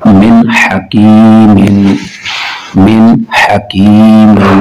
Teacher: نون ساکن کے بعد ہا حروف حلقی ہے تو ہم ظاہر کر کے پڑھیں گے، غنہ نہیں کریں گے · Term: اظہار